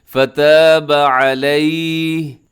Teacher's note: سے آپ کو نظر آ رہا ہے، تو وقف مطلق ہے، آپ یہاں پر رک سکتے ہیں، رکیں گے کیسے کہ آخر میں علیہ ایسے ہا کو ساکن کر دیں گے